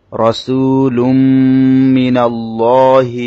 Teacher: রসু রর মধ্যে জবর, র মোটা করে পড়তে হবে।